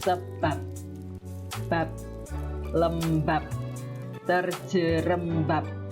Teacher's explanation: bunyi B ini dibunyikan tanpa aspirasi atau cenderung seperti bunyi P ya, seperti bunyi P ya, tidak ada aspirasi ataupun plosif ya, letupan gitu tidak ada.